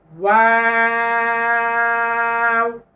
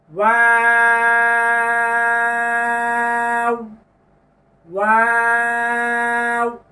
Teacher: যে কোনো চিহ্নতে ওয়াও ঠোঁট গোল করে উচ্চারণ করতে হবে। যখন ওয়াও আমরা শুধু হরফ উচ্চারণ করব, তখনও গোল হবে, মানে সব সময় ঠোঁট গোল করে উচ্চারণ করতে হবে।